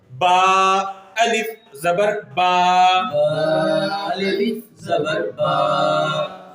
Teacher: دیکھیں جیسا کہ با ہم نے پڑھا نا پہلے، پھر بعد میں الف پڑھا، پھر بعد میں اس کی جو حرکت ہے، یعنی کہ الف سے پہلے زبر ہے، 1 الف حروف مدہ ہے نا، اس کو پورا 1 الف لمبا کرنا ہے